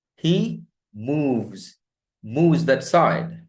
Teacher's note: Ends with voiced sound. He move, v, voiced. The S becomes z.